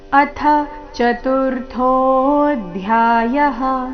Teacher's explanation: ಏನಿದೆ ಅಥ ಥ ಮಹಾಪ್ರಾಣ ಹ್ರಸ್ವ